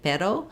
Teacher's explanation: the r sound can be said with a flap it's like one roll of a rolled r